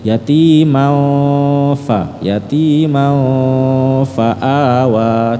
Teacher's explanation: Menyentuh ya, apa ya, gigi atasnya kurang menyentuh bibir bawahnya. Jadi yati mau betul-betul disentuhkan.